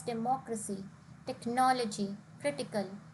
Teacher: democracy it is a four syllable word de moc resi and the stress here is on the third last syllable